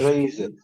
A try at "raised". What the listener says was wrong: This is Z. So raise, raised. Not raised. Delete the E sound.